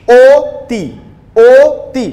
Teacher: ঠোঁটটা গোল হয়ে সংকুচিত হয়ে যাচ্ছে, ঠোঁটটা ফাঁকা কম হচ্ছে। তো যখন সংবৃত হচ্ছে, ঠোঁটটা সংকুচিত হয়ে যাচ্ছে, গোল হচ্ছে, সেটিকে আমরা সংবৃত উচ্চারণ বলবো, মানে ও ধ্বনির মতো উচ্চারণ।